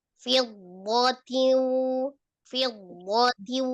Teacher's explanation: Dhannya jangan dipisah dalam tasdidnya.